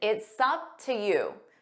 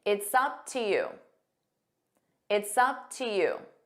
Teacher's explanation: So we take it's sup. We use that s sound.